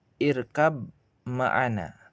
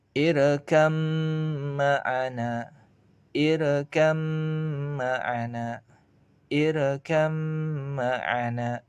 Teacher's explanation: Kecuali ba sukun bertemu dengan mim. Karena ba sukun ketika bertemu mim, maka ba sukun dilebur ke mim dan ditahan sekitar 2 harokat. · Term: idgham mutajanisain